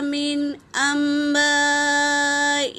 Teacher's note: نون ساکن کے بعد حمزہ آیا ہے تو یہاں پر اظہار ہوگا، من کہیں گے، اظہار کر کے پڑھیں گے۔